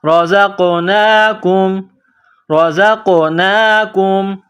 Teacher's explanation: زا میں سیٹی کی آواز پیدا کرنی ہے. زا کو قاف کے ساتھ ملانا ہے.